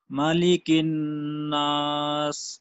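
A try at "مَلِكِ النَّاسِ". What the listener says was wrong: جی اس میں دیکھیے بعض احباب اس کو پڑھتے ہیں مالک الناس. مالک الناس نہیں ہے، اس کو ملک الناس.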